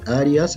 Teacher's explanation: aquí la I y la A tenemos un diptongo. No debemos separarlo, forman una sílaba.